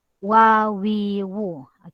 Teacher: Dia hanya bermain antara dua bibir tetapi tidak rapat seperti mana rapatnya sebutan huruf mim dan huruf ba. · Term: huruf waw